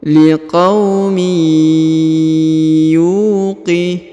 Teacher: Huruf yu dibaca 2 harokat karena di depannya terdapat waw sukun ya.